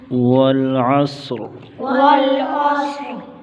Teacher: صاد کو موٹا کریں گے اور را کو بھی موٹا کریں گے وقف کی صورت میں، کیونکہ را ساکن سے پہلے ماقبل صاد بھی ساکن ہے اور ساکن سے پہلے ماقبل پر زبر ہے، اس لیے را کو وقف کی صورت میں موٹا کریں گے۔